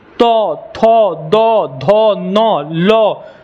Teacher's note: जब भी तो बोलोगे तो आपका जीभ जो है आपके दंत पे टच होगा, तो थोड़ा सा जो है आपके तालु को टच करेगा।